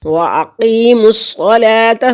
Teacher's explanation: یا ساکن سے پہلے لفظ کے نیچے ایک قاف کے کسرہ ہے، زیر ہے تو یہاں پر یا مدہ ہے اور اس کو ایک حرکت کے برابر لمبا کریں گے · صاد مشدد ہے، پیچھے بھی ملے گا، خود بھی پڑھا جائے گا